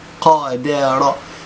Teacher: القاف مفخمة، الدال مرققة، والراء مفخمة